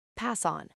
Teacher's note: We do not say pass, stop, on. We push the S sound directly into the O. It sounds like one long word. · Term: connected speech